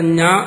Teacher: ചവർഗത്തിൽ പെട്ടതുകൊണ്ട് ഞാക്ക് താലുസ്ഥാനമുണ്ട്, പക്ഷെ നാസികയുണ്ട്